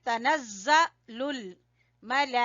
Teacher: زا کے اوپر جو ہے وہ شد ہے، اس لیے زور دیں گے